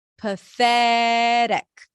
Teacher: Stress is on the second syllable.